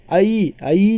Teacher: आई जो है तो आ और ई से मिलकर बना है, इसे आई पढ़ते हैं। तो ये आ और ई से मिलकर बना है, इसीलिए इसे भी संयुक्त कहा गया। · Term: संयुक्त स्वर